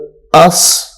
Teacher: حمزہ، سین زبر اس، اس میں سیٹی کی آواز جو ہے وہ نکالنی ہے